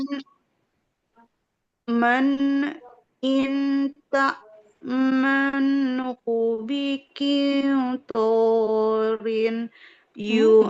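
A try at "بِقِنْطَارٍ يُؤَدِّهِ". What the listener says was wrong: Nggak boleh bikin torin. Masuk ke huruf ya. Nggak boleh bikin torin. tanwinnya masuk ke huruf ya langsung. Bikin torin yuaddihi idgom bi gunnah. Tidak bikin torin. Nah, tidak kedengeran bunyi rin rin rin. Nggak ada bunyi nun sukunnya.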